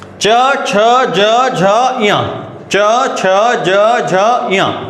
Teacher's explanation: चा वर्ग बोलोगे ना, तो आपकी जीभ आपकी तालू पे टच होने वाली है। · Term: तालव्य व्यंजन